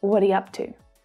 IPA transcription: wɒdə j(ə)ʌptuː